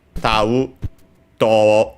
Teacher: because of the evolution of the Japanese language, that a-u sequence became long o.